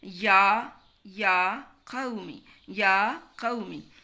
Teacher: یہ جو میم کے نیچے زیر ہے یہ ٹیڑھی زیر ہے، اس کو لمبا نہیں کرنا ، قومی نہیں کہنا۔ یا قومی یا قومی، انکم انکم، اور